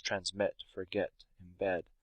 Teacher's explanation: So the word transmit, for example, that's a 2-syllable word, but that last part of it is the part that's emphasized. That's the stress part of it. So it's transmit, forget, embed.